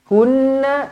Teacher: وَقَالَ الَّذِينَ كَفَرُوا أَإِذَا كُنَّا تُرَابًا وَآبَاؤُنَا أَإِنَّا لَمُخْرَجُونَ وَقَالَ الَّذِينَ كَفَرُوا, panjang 4 ataupun 5 harokat, aiza kunna, aiza, za 2 harokat, kunna nun sabdu. Okey, nun sabdu wajibul gunnah, dengungkan 2 harokat